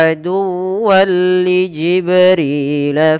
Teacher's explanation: ketika ada tanwin bertemu dengan lam maka tanwinnya masuk kepada huruf lam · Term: Idgham bila ghunah